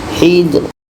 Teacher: Ro ini dibaca secara tarqiq, tipis. Hijr. Jadi kesimpulannya adalah ketika kita menemukan dua huruf sukun di akhir, ketika berhenti dua-duanya tetap dibaca.